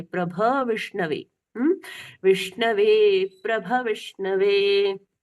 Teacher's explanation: भगवान जी का भ भ स्वर के साथ में पूर्ण भ सुनाई देना चाहिए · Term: अस्वर